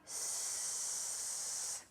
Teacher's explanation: Now try s. You see? There is no vibration.